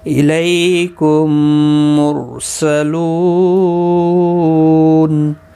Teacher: میم ساکن کے بعد دوسرا میم آیا ہے، تو گویا کہ پہلا میم نہیں پڑھا جائے گا، یہ والا میم اس میں مدغم ہوگا۔ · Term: ادغام شفوی